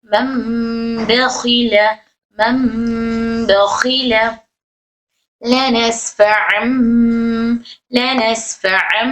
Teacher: जैसे मम, मन है ना यहाँ पर, मीम नून जबर मन, तो हम इसको मन नहीं बोलेंगे बल्कि मम मम बोलेंगे। नून की आवाज को मीम में बदल लेंगे। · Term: इखलाब